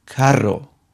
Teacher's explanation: r sound that is not at the beginning of a word we use the double r which has also a rolled R sound